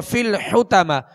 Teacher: حا کو وسط حلق سے ادا کریں گے اور طا کو پر پڑھیں گے